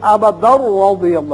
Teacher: ابدن تھا یا وقت کی صورت میں ابدا پڑھیں گے اور اگر ملانا چاہیں تو پھر ابدا رضی اللہ اس لیے کہ تنوین را سے ملے گی ادغام بغیر غنہ ہوگا